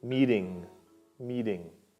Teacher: in american english we drop the t sound and use a d sound